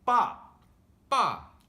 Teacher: The fourth tone is pretty straightforward. You just say it with a high pitch, but not too loud. For example, the word give up is 放弃.